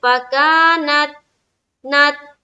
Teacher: دیکھیے وَفُتِحَتِ السَّمَاءُ فَكَانَتْ أَبْوَابًا، دھیان رہے یہ جو فکانت ہے نا، یہاں پر اکثر و بیشتر قلقلہ ہو جاتا ہے، کس حرف میں، تا میں، تا کے اوپر جزم ہے نا، نون کو تا سے ملائیں گے، لیکن جب ملائیں گے تو ہماری آواز بالکل ٹکرانی نہیں چاہیے، ڈبل ساؤنڈ بالکل سمجھ میں نہیں آنا چاہیے۔ کیا پڑھیں گے، فکانت، نت، تا میں تا ادا ہوتے ہی ساؤنڈ بند، تا ادا ہوتے ہی آواز بند، فکانت، اس طرح سے۔